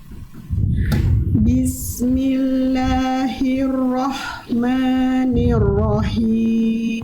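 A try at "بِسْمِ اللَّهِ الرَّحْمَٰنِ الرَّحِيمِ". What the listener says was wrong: Tinggal tebalkan huruf ro, vokal o-nya itu bukan karena kita sengaja mengokkan, tapi angkat pangkal lidah. Bismillahirrahmanirrahim.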